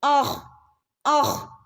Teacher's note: Half സുക്കൂന് കൊടുത്താൽ മതി കേട്ടോ, കാരണം കൽക്കലയുടെ ലെറ്റർ അല്ല ഹ.